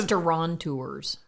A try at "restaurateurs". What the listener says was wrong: Restaurateurs. There is no N.